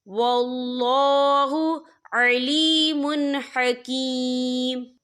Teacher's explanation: واللہ علیم حکیم، یہ دیکھیں واللہ، یہاں اللہ کا نام پر پڑھا جائے گا کیونکہ اللہ کے نام سے پہلے زبر ہے، اور آگے دیکھیں علیم، میم کے اوپر تنوین ہے، تنوین کے بعد جو ہے ہا آ رہا ہے، اور ہا جو ہے حروف ہلکی کا ورڈ ہے، تو ہم یہاں اظہار کریں گے، ہم اسے بنا غننے کے پڑھیں گے